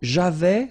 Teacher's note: final S not pronounced